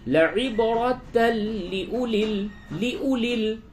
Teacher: تنوین کے بعد لام ہے، ادغام بلا غنہ ہوگا، بغیر غننے کے ادغام کیجئے. لعبرۃ لأولی اس واو کو نہیں پڑھیں گے.